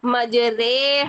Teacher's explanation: تو اس کو جو ہے نا لٹا کے پڑھنا، جیسے ری کو رے کر کے پڑھنا، تو یہ والا پورے قرآن میں ایک ہی کلمہ ایسا ہے کہ جس کو ہم نے مجریہا نہیں کرنا ری نہیں پڑھنا اس کی کھڑی زیر کو، بلکہ رے کر کے پڑھنا ہے اس کی کھڑی زیر کو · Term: امالہ